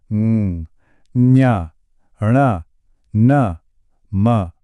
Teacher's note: यह वो हैं जिन्हें बोलते समय हवा मुंह से नहीं बल्कि नाक के रास्ते से बाहर निकलती है। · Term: नासिक के व्यंजन, नासिक्य व्यंजन